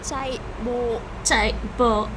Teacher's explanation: the heavy tone is a low falling constricted tone · Yeah, it's constricted. Somehow I guess there's maybe like a glottalization there.